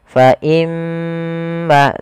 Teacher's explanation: Cara membacanya adalah menahan suara gunnahnya. Fa imma, tidak langsung fa imma.